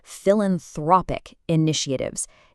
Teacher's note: You have to hit a heavy stress on throp in the first word, and then a really sharp nit sound in the second word.